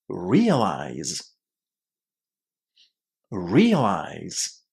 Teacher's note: Realize is stressed on the first syllable. And it's going to be exactly the same if you use it in the past, realized, or as a gerund, realizing, first syllable.